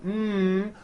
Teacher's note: closing off your nose you see you cannot do it because the M sound comes out of your nose it's a nasal sound